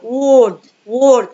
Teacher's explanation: الار لما بتيجي في النص بتبقى light يعني خفيفة، ما بتتكش قوي على حرف الار. والw هنا لما جه بعديها اهو بقول و و word word، يبقى الw منطقه و و.